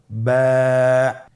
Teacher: বা হরফে টান হবে এক আলিফ টান